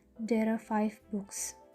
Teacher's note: Another example, if we read there are 5 books, we can add r between there and are